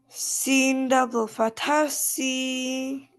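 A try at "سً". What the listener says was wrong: No, I didn't say sin.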